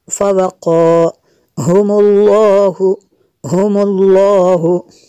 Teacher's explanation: لفظ اللہ عز و جل سے پہلے لفظ پر پیش ہے، اس کو پر کریں گے۔ لفظ اللہ عز و جل کو ہم پر کریں گے۔